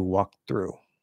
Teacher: I'm sort of stopping the K I'm going straight into the dental T I'm not even going up here at all and then I'm